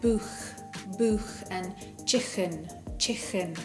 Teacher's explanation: you can hear that K sound there is right at the back of the throat.